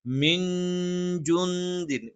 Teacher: സുക്കൂനുള്ള നൂനിന് ശേഷം ജ, സുക്കൂനുള്ള നൂനിന് ശേഷം ദ. ഇത് രണ്ടും ഇഖ്ഫ ആണ്. നൂനിനെ അവ്യക്തമാക്കി തന്നെ ഉച്ചരിക്കണം.